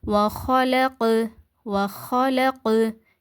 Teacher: கல்கலாவுடைய எழுத்து சுக்குன் பெற்று இருக்குது. சுக்குன் பெற்ற கல்கலா எழுத்து எங்க வந்துருக்குன்னா ஒரு வார்த்தையுடைய இடையில வந்திருக்குது. அப்ப நம்ம எப்படி ஓதணும்? லேசாதான் அசைச்சு ஓதணும்.